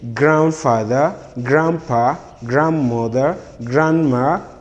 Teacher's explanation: the letter d in grand is not to be realized